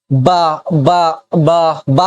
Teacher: حروف صفی، جو حروف کہاں سے نکلے؟ لب سے نکلے، ہونٹ سے نکلے